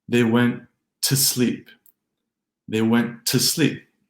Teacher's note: But put it in a short sentence, they went to sleep, the to changes in English to a more neutral, reduced t